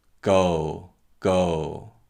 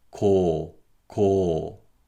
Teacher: And this light aspiration is what makes these consonants sound similar to K, T, P, and CH sounds, but not exactly the same. Listen to the contrast between voiced English consonants and the voiceless Korean consonants with light aspiration. · These Korean consonants are all voiceless sounds. So the vocal cords stay open and there is no vocal cord vibration. However, these sounds are produced with light aspiration. And this light aspiration is what makes these consonants sound similar to K, T, P, and CH sounds, but not exactly the same.